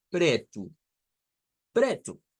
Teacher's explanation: con una R suave, una R flap, se le conoce a eso en el inglés